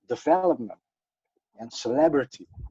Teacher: in english you have to do it on the second syllable so development and celebrity